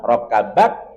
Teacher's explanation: Kaf dia punya sifat Hames syidah kita tahan suara rakabat kemudian berikan sifat hamesnya sedikit kita alirkan nafas R ada